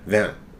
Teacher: there's no real T sound at the end of that